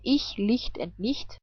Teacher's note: CH can also be pronounced like hi, but without voice. And it's pronounced this way after the E, like in ich, Licht and nicht.